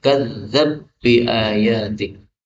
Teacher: Ba ketemu ba boleh idgham menjadi kadzdzab bi ayatik.